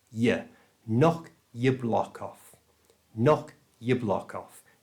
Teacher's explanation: Notice the pronunciation here. The yaw is shortened down to just y. That's the y and the schwa sound.